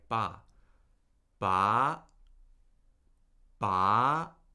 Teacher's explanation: The second tone begins at your normal speaking range and then as soon as it as soon as you start speaking a syllable with a second tone, you start steadily rising and you end up toward the high end of your normal speaking range